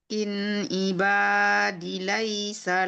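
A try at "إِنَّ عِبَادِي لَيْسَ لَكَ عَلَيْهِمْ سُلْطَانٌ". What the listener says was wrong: Panjang D-nya 2 harakat.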